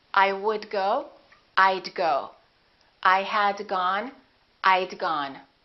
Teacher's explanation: I would and I had sound exactly the same when they're contracted they both sound like i' I would go I'd go I